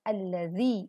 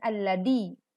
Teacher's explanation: Perhatikan saat kita membaca alladzina, yang dibaca adalah za, maka alladzi bukan alladhi. Kemudian yudhahiruna, huruf dha adalah huruf tebal, maka perhatikan pangkal lidah mengangkat suara yang dimunculkan menjadi yudha.